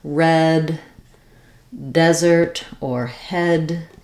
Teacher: And so in desert, because we stress on this first syllable des, the letter E has the clear vowel E